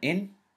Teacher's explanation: You must pronounce the kasra. You must pronounce the kasra, but you must add an n sound to it. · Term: kasratan